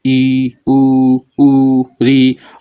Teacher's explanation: वे स्वर जिनके उच्चारण में मुख वृत्त के समान बंद सा रहता है, ठीक है, अर्थात मुख सबसे कम खुलता है, समझो एकदम हल्का सा खुले। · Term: संवृत स्वर